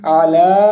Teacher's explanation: আলা লায়ের উপর খারা জবর আছে, এজন্য আমাদেরকে দুই আলিফ পরিমাণ টান দিতে হবে।